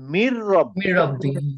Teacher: আমি যখন পড়তেছি তখন আমি নুনটাকে বাদ দিয়ে দিচ্ছি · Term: নুন সাকিন